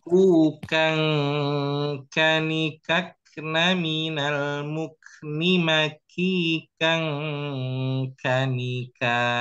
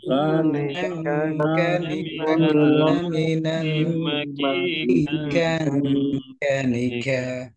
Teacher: Nah, jadi perhatikan di sini ku kang kani di sini ada ikhfa dan ikhfa pada huruf kaf ini dia dari hidung. Nah, jadi nggak ada dari mulut sehingga bukan ku kang tapi ku kang.